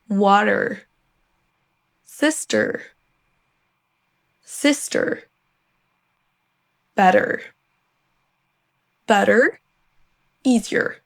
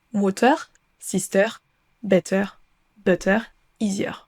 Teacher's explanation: Vous avez un son schwa suivi d'un R, mais pas un R à la française.